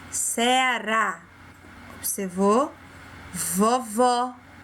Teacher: O som fica aberto e a sílaba que está acentuada, ela é falada de forma mais forte. Quando a gente pronuncia essa sílaba, a gente fala com ênfase, com força. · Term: som aberto